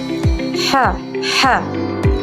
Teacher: ha yang mana makhrajnya terletak di tenggorokan dalam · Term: ha pedas